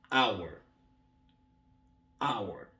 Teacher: Alors, ici, le H est déjà muet. Ça va donner hour.